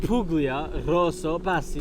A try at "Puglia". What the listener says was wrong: Puglia. You don't pronounce the G. It's Puglia. Puglia.